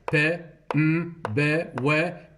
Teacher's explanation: Bilabial, that's p, m, b, w, between the two lips.